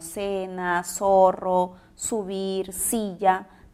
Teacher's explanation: en el cual las personas articulan constantemente el sonido ese y no diferenciamos sonidos como la interdental zeta por lo tanto articulamos palabras como cena zorro subir silla de la misma manera · es un fenómeno fonético en el cual las personas articulan constantemente el sonido ese y no diferenciamos sonidos como la interdental zeta